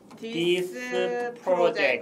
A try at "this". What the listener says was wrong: This 하지 말고 this. S 발음을 죽입니다. This.